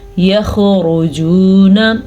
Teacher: را کو پر پڑھنا ہے کیونکہ را کے اوپر پیش ہے، خا کو پر پڑھنا ہے کیونکہ خا حروف مستعلیہ میں سے ہے